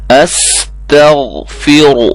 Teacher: را موٹی ہوگی، غین کو موٹا کرنا ہے، باقی سب کو باریک کرنا ہے